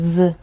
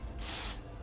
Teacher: So the Z vibrates, the S does not vibrate.